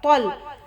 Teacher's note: तो और ता में बहुत फ़र्क है, तो को थोड़ा सा मोटा करके पढ़ना